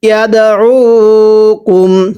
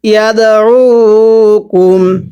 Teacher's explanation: এরপরে ইয়া দাল জবর ইয়াদ, দালে যদি সাকিন হয় কলকলা করে পড়তে হয়